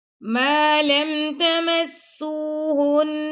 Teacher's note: سین سے واو مت ہے تو سین کو آپ نے 2 سیکنڈ تک لمبا کرنا ہے